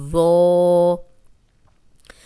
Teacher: ذو نرم بھی ہے اور موٹا بھی ہے، اس میں سیٹی کی آواز نہیں آئے گی